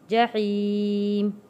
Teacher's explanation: جحیم یا ساکن سے پہلے زیر ہے، حروف مدہ ہے، 1 الف کے برابر ہم نے کھینچ کر پڑھنا ہے